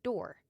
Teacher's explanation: rhoticity is when you pronounce the R after vowels in words like door.